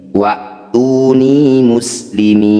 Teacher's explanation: Muslimina, ketika mat tabi'i bertemu huruf hidup dan dihentikan, ini jadi bacaan mat alif disukun. Mi panjangkan 6 harokat, huruf terakhir sukunkan.